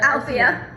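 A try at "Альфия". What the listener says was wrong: Alfia. Alfia. Okay, you say it as al, but you have to make your L softer. L. Like L. Al. Fi. Alfia.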